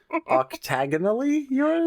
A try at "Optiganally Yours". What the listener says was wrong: It's not octagonally. It's Optiganally P-A-L-L-Y.